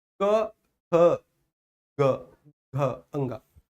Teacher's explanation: लेकिन स्वर तंत्रियों में कंपन, क ख ग घ अंगा। तो सर प्रत्येक वर्ग का तीसरा, चौथा और पांचवा, इनको बोलने में स्वर तंत्रियों में हल्की सी झंझनाहट होती, हल्की सी गूंज, हल्की सी नाद होती है ना